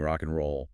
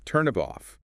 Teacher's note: The final consonant of one word links directly onto the initial vowel of the next.